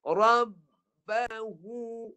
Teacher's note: Huruf ha adalah huruf yang keluar di pangkal halqum.